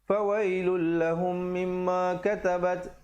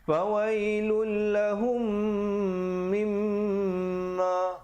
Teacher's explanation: Sekali lagi kita jumpa idgham mislan saghir, mim mati bertemu mim, dengungkan 2 harakat